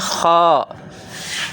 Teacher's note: یہ ادنا حلق یعنی حلق کا اوپر والا حصہ، یہاں سے خا ادا ہوتا ہے۔